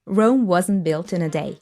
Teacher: Wasn't, we lose the T sound.